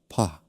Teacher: 입술을 단단히 붙였다가 터트리듯이